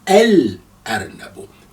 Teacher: you can hear sukun also on the lam because the letter after that lam is not carrying shadda. Hence we say al-arnabu. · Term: moon letter